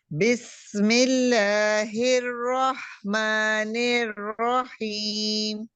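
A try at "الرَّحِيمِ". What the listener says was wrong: ہی کے لیے آپ موٹا نہیں اس کو کریں، زبان کی جڑ پیچھے سے نہیں اٹھانی، ہیم،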